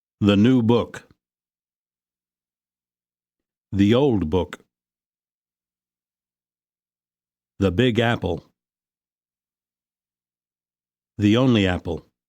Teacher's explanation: the before a consonant is pronounced with the vowel uh but before a vowel sound it is pronounced with the e sound? and then links very easily with the following vowel sound.